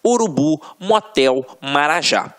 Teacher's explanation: Só a título de exemplificação, observem aqui, ó, oxítonas. A última sílaba é a tônica.